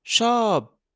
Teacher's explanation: Le son se termine quand la bouche se ferme et plus aucun air ne sort. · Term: P final